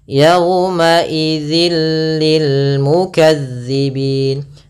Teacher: suara tanwinnya masuk ke huruf lam dan nunnya, suara nunnya hilang. Awalnya yauma idzin ketemu lam langsung ke lam, jadi mengganti l. · Idgham bila gunnah, yaitu idgham yang kita baca tanpa disertai dengan gunnah. Maka cara membacanya yaitu suara tanwinnya masuk ke huruf lam dan nunnya, suara nunnya hilang.